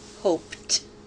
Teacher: To make the verb mean did hope before now, remove the E and add ED to form the word hoped. The ED is pronounced T because hope ends with an unvoiced sound.